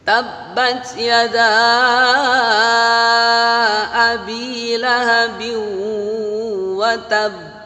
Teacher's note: karena ada tasydid maka ditahan dulu baru mantul